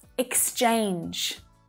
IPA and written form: ɪksˈt∫eɪndʒ (exchange)